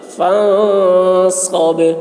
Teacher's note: نون میں اخفا، صاد کی آواز موٹی ہوگی، با میں قلقلہ